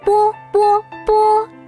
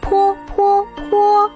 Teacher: 我们用一张白纸放在嘴前，读波试一试，白纸不动。读泼呢，白纸被吹动了。